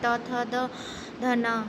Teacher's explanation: त, थ, द, ध, न हमारी दंत ध्वनियां हो जाती हैं।